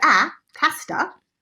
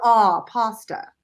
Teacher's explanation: British goes to 'aa' - 'pasta', and American goes to 'ah' - 'pasta'. And this A sound is super relaxed.